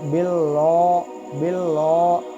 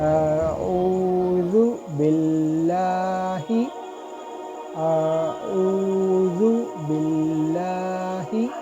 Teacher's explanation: جب بھی اللہ کا اسم کا لام ہو اس سے پہلے زیر آئے تو اس لام کو ہم باریک پڑھیں گے، موٹا نہیں پڑھیں گے۔ اگر کوئی شخص اس لام کو موٹا پڑھے گا تو باللہ کہے گا تو وہ غلط ہوگا، تو اس لام کو ہم باریک پڑھیں گے۔